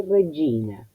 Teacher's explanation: Pero si prestamos atención, la pronunciación de la letra G con la I responde al fonema Y, que tiene sonoridad